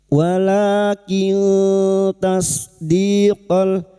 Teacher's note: nun sukun bertemu ta ikfa hakiki. Samarkan binun sukun dan mendengung selama tiga harakat.